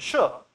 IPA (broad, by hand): ʃ